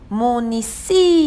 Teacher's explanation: a palavra município de sílaba tônica si · Ela é paroxítona porque sua penúltima sílaba é tônica, ou seja, a mais forte, e acentuada porque recebe a acentuação gráfica, que é o acento agudo. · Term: paroxítona acentuada